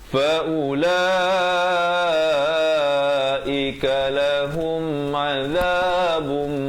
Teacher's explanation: Di sini tanwin bertemu mim dengan dengung 2 harakat, masuk beserta dengung. Daripada azabun jadi azabum, tapi jangan lupa dengungkan 2 harakat.